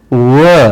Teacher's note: ವ ಇದನ್ನ ಅರೆ ವ್ಯಂಜನ ಅಂತಲೂ ಕೂಡ ಕರೀತಾರೆ. ವ ಅನ್ನಬೇಕಾದ್ರೆ ಮೇಲಿನ ತುಟಿ ಕೆಳಗಿನ ತುಟಿಗೆ ಬಹಳ ತೀಕ್ಷ್ಣವಾಗಿ ತಗುಲಿರುತ್ತೆ.